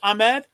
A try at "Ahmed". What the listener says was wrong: No, not a K. It's an H, but with the intonation is more power. Powerful.